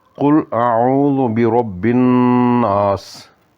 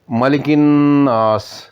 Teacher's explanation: نون نی آواز کی نک نے بانسے وچ کھڑی تے دو حرکات نے برابر لمبا کرنا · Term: غنہ